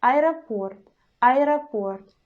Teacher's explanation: in this situation, our E changes to the short I, and we pronounce aeroport, aeroport, I, very short.